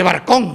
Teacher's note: la R y la L, como ambos son alveolares, se pronuncian en los alvéolos, pues dice barcón, ¿no?